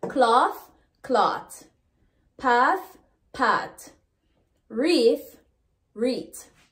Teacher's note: The voiceless or the unvoiced TH becomes T.